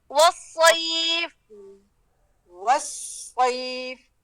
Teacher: پوری زبان پہ وزن آئے گا حرف الصاد کا ایک جگہ میں نہیں ہے